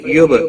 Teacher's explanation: با ساکن پر قلقلہ ہوگا